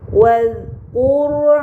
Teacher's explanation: Pada kata wadhkur terdapat ro sukun sebelumnya harokat dhammah, maka ro sukun tersebut harus dibaca secara tebal.